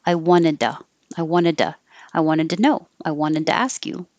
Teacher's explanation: just one nid and then the two changes to da because the t changes to a d and i'm not making a perfect u sound i'm going to change it to the schwa